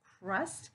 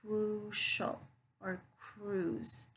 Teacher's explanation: pronounced with that short u sound like a crust while other words have that ooh sound like crucial or cruz